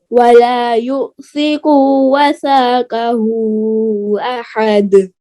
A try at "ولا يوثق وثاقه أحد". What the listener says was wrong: वला यूसिकु, यू को लंबा करें, काफ के पेश को लंबा नहीं करें। वला यूसिकु वसाक़हु अहद वला यूसिक़ वसाक़हु अहद वला यूसिक़ वसाक़हु अहद